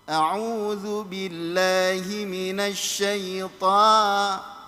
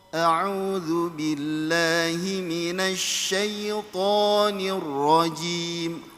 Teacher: ketika mengucapkan to panjang, upayakan tebalnya itu terasa. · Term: To tebal